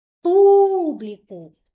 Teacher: O pu é a sílaba mais forte. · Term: proparoxítona